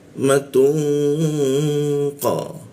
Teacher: Kita masuk ke dengung, kita tahan di dengungnya 2 ketukan, dengungnya di huruf qa dia.